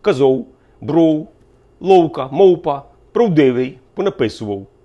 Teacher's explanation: звукосполучення Ау у кінці складу сприймається як цілісний дифтонг і вимовляється оу